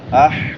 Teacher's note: چھوٹی ہا ہے وسط حلق سے، حلق کے درمیان سے.